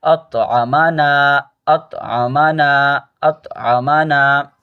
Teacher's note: حمزہ طا زبر اط، عین زبر ع، اطع، میم زبر م، اطعم، اطعم، زبر زیر پیش کو جلدی پڑھتے ہیں، کھینچتے نہیں، آپ سب پیچھے پڑھ چکے ہیں۔ اطعم، نون الف زبر نا، یہ الف مدہ ہے، اس کو کھینچیں گے